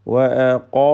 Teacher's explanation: വഅഖാമു ഖാഫിനും അലിഫിനും തഫ്ഖീമ് കൊടുക്കണം, തടിപ്പിച്ച് ഉച്ചരിക്കുക